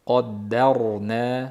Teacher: Qaddarnada qof yo'g'on, o'zidan oldingi fatha bo'lib kelayotgan sukunli ro ham tafxim, ya'ni yo'g'on. Ikkalovining orasida dal ham yo'g'on bo'lib qolish ehtimoli kuchli.